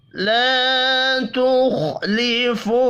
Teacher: الف مدہ ہے، ایک الف کے برابر کھینچ کر پڑھیں گے۔ تخ، خا ساکن پر قلقلہ نہیں کرنا، خا پر بھی پڑھا جائے گا۔